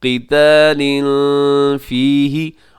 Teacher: يسألونك عن الشهر الحرام قتال فيه، یہ اس آیت مبارکہ کے اندر دیکھیے گا، يسألونك عن الشهر الحرام، الحرام اس میں را جو ہے وہ موٹا پڑا جائے گا، قتال فيه، یہاں قتال کے نیچے تنوین ہے، تنوین کے بعد آگے فيه کے شروع میں فا ہے، تو یہاں اخفا کیجیے گا